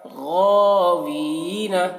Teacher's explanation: غین کو کھینچ رہے ہیں اور وی کو کھینچ رہے ہیں کیونکہ یا مدہ ہے